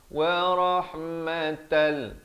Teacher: masuk tanpa dengung di sini, daripada wa rahmatan jadi tal. Wa rahmatan liqaumi, masuk beserta dengung di sini 2 harakat.